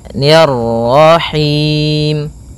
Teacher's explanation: ni tipis ketemu dengan ra yang tafkhim, ra tebal, maka kita baca dengan bacaan tebal ra-nya, nir-rahim.